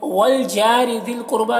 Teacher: والجار ذی القربا جا میں الف مدہ ہے، را کے نیچے زیر ہے، اسے باریک پڑھنا ہے۔ ذی القربا یہاں پر قاف کو پر پڑھنا ہے، را کو بھی پر پڑھنا ہے، با میں کھڑا زبر ہے جو الف مدہ کی طرح ہے۔